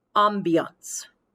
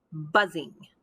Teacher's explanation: notice the soft b and position of the lips within the word ambiance as opposed to the b in the english word buzzing